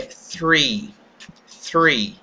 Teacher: Mas como nós temos ele junto com o fonema R, que é o fonema R. O R nós fazemos com a língua dobrando para trás. Então, combinando os dois sons, a pronúncia correta do número 3 é three.